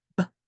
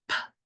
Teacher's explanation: If you make the B sound like B, you'll feel a vibration. Whereas if you do P, which is the P sound, you would not feel any vibration.